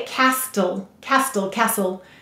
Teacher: if you try to say castle castle castle your tongue will just skip the t sound